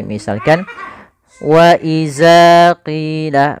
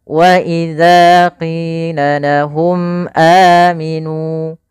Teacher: Pada lafal wa idza, hati-hati di dalam pelafalan huruf zal, jangan sampai kita merubahnya menjadi huruf zai · Maka dia agar menyempurnakan daripada makhraj daripada huruf zal, ujung lidah kita tempelkan dengan dua gigi sari kita